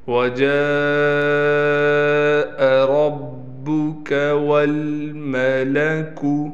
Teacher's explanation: را کو ہم موٹا کر کے پڑھیں گے